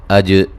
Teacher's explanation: जीम पे क़लक़ला करेंगे